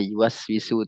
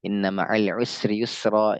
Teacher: Sifatnya satu lagi yaitu sofir, ya, sifatnya adalah sofir karena huruf sin huruf yang mendesis tajam